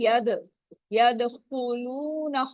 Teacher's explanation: وَرَأَيْتَ النَّاسَ سا کو لمبا نہیں کرنا، زبر کو لمبا نہیں کرنا، زبر زیر پیش یہ ہم نے دھیان رکھنا ہے، اس کو 1 کاؤنٹ ہی یہ ہوگا. ید دال پہ دال ساکن ہے، کلکلا ہو رہا ہے تو آواز باؤنسنگ ساؤنڈ آئے گی